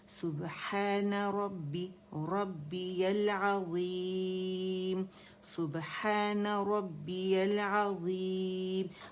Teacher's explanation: ہم نے با مشدد پہ سٹریس دینا ہے